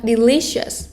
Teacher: Nhấn cho cô vào trọng âm 2 nhá